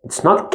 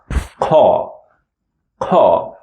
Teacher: You feel like the sound comes from the throat, but it is not. It's coming from the end of the mouth.